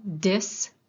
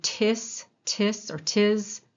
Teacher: So if you feel your throat as you're saying something like dis, you can feel your vocal cords vibrating at the d as soon as you start saying it. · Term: voiced versus voiceless